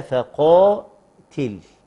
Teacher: القاف حرف مفخم، طب وبقية الكلمة مرققة